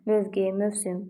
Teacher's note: Mövqe, mövsüm, bu tip sözlərdə v-da düşmə, o-da uzanma yoxdur